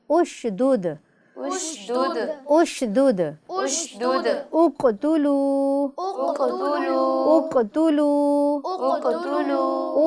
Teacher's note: تو الف پر پیش کی عارضی حرکت لگا کر ہم اسے پڑھیں گے۔